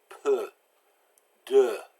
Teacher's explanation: EU is another one of those lips pursed sound so you have to stick your lips out